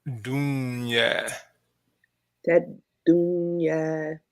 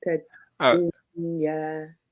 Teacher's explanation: This one you have the sukoon. We make sure we double that dal.